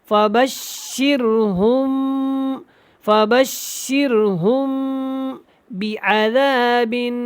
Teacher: ہم، یہاں پہ میم ساکن اس کے بعد با ہے، اور یہاں پہ کیا کریں گے، ہم اقلاب کریں گے، ہم مطلب کہ غنہ کی طرح اس کو لمبا کریں گے